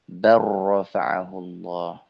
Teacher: menghilangkan huruf lamnya diidgamkan langsung ke huruf ro secara sempurna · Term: Diidghamkan